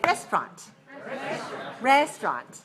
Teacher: Okay, 2 syllables. Stress the first.